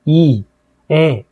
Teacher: 입술에 힘이 안 들어가고 이, 에, 이렇게 평평한 상태를 평순이라고 얘기하고